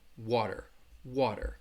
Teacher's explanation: Often when the T, you have a T sound in the middle of a word, the flap T sounds like a D, a very soft D. So if you hear me saying unwittingly, you're not really going to hear that T much. It's going to sound like a light D sound